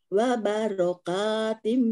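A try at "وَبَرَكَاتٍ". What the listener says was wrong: baroka, enggak ada wanya. Barokatim.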